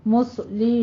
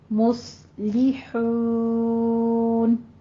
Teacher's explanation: صاد کو پر کریں گے تو آپ نے پھر لام آگے باریک رکھنا ہے، لام کو اس کے ساتھ پر نہیں کر دینا. مسلی نہیں کہنا، مسلحون.